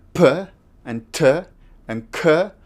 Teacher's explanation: I close my lips completely nothing can go out my air tries to go out it gets into my mouth then I open my lips again and you hear a small explosion that small explosion that's the sound of the p and similarly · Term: plosives